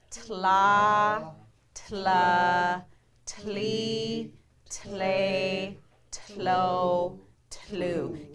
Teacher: Can you guys feel that like burst of air when you're doing the TL sound?